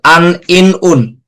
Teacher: হালকা উচ্চারণটা কিন্তু নাকের মধ্যে চলে গেছে, হালকাও, বুঝতে পারছি আমরা। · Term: তানবীরের উচ্চারণ